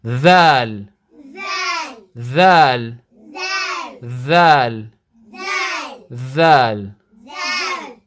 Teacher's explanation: you're using the tip of your tongue with the front upper teeth